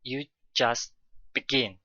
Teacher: there is a break between just and begin to stress begin